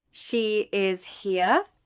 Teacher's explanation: With rising intonation asks for confirmation.